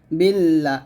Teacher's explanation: এই লাতে আমি 3 আলিফ টান দিয়ে হাঁটায় সাকিন করছি, কারণ এখানে আমি থামছি, থামার কারণে আমার এখানে লাতে 3 আলিফ টান দিয়ে হাঁটায় সাকিন করে ফেলছি, এটাকে মধ্যে আরজি বলা হয়।